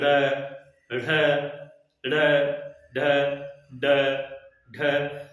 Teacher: इनके उच्चारण करने में जीभ का अगला जो हिस्सा है वो झटके से नीचे गिरता है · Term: उत्क्षिप्त